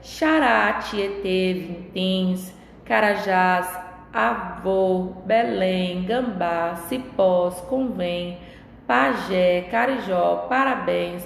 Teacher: a sílaba tônica, ou seja, a sílaba pronunciada mais forte, é a última sílaba, tá? Então, quando ocorre do acento gráfico ou da sílaba, né, automaticamente da sílaba tônica, ela está posicionada na última sílaba, eu classifico quanto à tonicidade, né, da sílaba tônica de oxítona, tá?